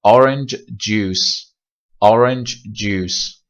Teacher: خب اما ما یه استثنایی هم داریم توی بحث gemination در مورد کانسوننت ها و استثنامون میشه چ و ج، فونیم چ و تو این حالت دقت بکنیم که با اینکه این حالت رخ میده ما اینها رو به صورت جدا تلفظ میکنیم